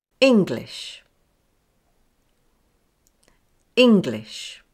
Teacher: The first syllable. It's fairly equally balanced, but with stronger stress on the first part.